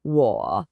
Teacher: It has this unique falling and then rising sound. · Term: third tone